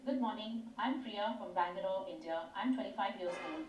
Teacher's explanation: my voice goes up sometimes, the pitch falls at the end of a sentence.